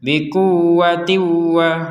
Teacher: kita masukkan tanwinnya ini atau kasrainnya ini kepada huruf wa huruf wau dan disertai dengan dengungan